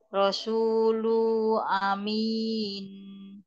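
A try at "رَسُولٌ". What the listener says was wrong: Ada tanwin di lun ya. Rasulun itu ya.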